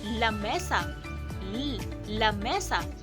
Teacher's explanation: Ang hangin ay lumalabas sa gilid ng dila habang nakadikit ang dulo nito sa gilagid. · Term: lateral